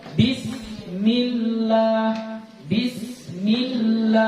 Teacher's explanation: Jadi ini lafzul jalalah. Sebelumnya ada kasrah. Maka kita baca tipis.